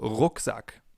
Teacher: In English it would be R. In German it's R. We form it more in the back of our mouths.